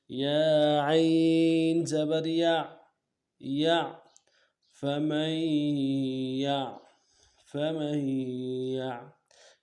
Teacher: عین ہے، آواز جاری رہے گی۔ عین کو واضح بھی کرنا ہے، موٹا کرنا ہے